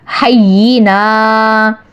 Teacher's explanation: حینا پہ آپ نے ہا کو یا کے ساتھ جما کر رکھنا ہے کیونکہ یہاں پہ تشدید ہے. نا کو ایک الف کے برابر کھینچنا ہے